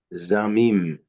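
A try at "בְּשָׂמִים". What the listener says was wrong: You're still saying z, bes, samim, and then has, samim. Think of it as an S set.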